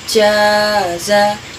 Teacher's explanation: Mad wajib mutasil yaitu huruf yang berharokat 5 ketukan